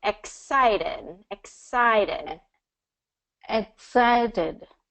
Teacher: And then it's going to be second syllable stress.